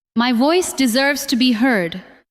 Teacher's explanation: This time, do not make every word equally strong. Stress, voice, deserves, and heard.